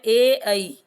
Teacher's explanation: इनका उच्चारण स्थान कंठ एवं तालु दोनों से होने के कारण ये कंठ तालव्य वर्ण कहलाते हैं, क्योंकि ए का निर्माण ए और ई के संयोग से हुआ है।